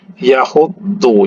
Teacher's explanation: dotnya bertasydid ditahan, ya. Yahuddu, jangan yahudu, ya.